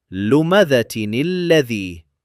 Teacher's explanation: The noon sakin of the Tanween and the lam sakin, the first half of that shadda. So the noon is given a kasrah and we recite لمذة الذي, smooth and connected.